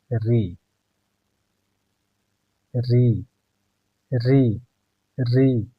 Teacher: दांतों के ऊपर मूर्धा से टकरा रहा है हवा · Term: मूर्धन्य